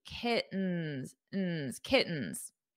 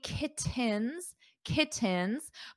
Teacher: in American English when we have a t or two T's between vowels we pronounce the t's as a very soft D